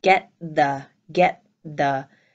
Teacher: And then my phrase of get the becomes get the, get the. The T is held back, the T is not released.